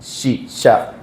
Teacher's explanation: യശ് ഷീന്റെ മഖ്റജ് ജീം ഷീൻ യ. നാവിന്റെ മധ്യം, നാവിന്റെ നടുഭാഗം മുകളിൽ തട്ടലാണ്.